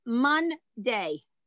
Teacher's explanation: So for example, when I have the word in English, Monday, there's the N, there's the D. There's no vowel in between the N and the D.